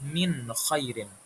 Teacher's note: Jadi kita baca nun sukunnya itu jelas enggak dengung. Enggak mendengung kayak min khairin, tapi kita baca jelas min khairin. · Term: izhar